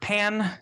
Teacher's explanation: the word pan uh we have P A and N and the a comes before a nasal n and so the a becomes nasalized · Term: nasalized vowel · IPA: [ pæ̃n ]